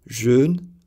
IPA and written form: ʒøn (jeûne)